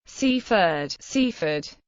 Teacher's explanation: full vowel in each syllable cfd C ford however outside Sussex it is commonly pronounced with a reduced vowel on the second syllable